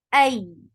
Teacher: hamza is very sharp sound attached with ya, and when you are attaching hamza with ya will get sifa of nabar. Ay, ya is 2 counts long.